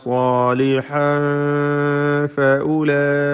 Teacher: സാലിഹൻ തൻവീനിനെ ഇഖ്ഫ ഹഖീഖി നൽകി അവ്യക്തമാക്കി മറച്ച് മണിച്ചോതേണ്ടതാണ്. ഫഉലൈക ഇതിലെ ദീർഘം മദ് മുത്തസിൽ വാജിബാണ്.